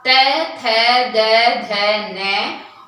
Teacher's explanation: इनका उच्चारण जब हम करते हैं तो हमारी जो जीभ है वो दांतों का स्पर्श करती है, और इसके कारण इनका जो उच्चारण स्थान है वो दांत माना जाता है, और इस ध्वनि को दंत्य कहते हैं।